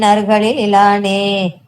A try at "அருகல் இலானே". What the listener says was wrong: அருகலில் இலானே கிடையாது. அருகல் இலானே. அருகல் இலானே அவ்வளவுதான். அருகல் பிளஸ் இலானே அருகல் இலானே அவ்வளவுதான். அருகலில் இலானே கிடையாது.